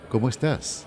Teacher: es la entonación descendente en los finales sí es terminar hacia abajo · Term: la cadencia